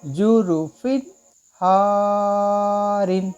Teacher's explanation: इस दो ज़ेर की तनवीन को गुन्ना किया, तो एक्चुअल कायदे के मुताबिक इसको गुन्ना नहीं करना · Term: बग़ैर गुन्ना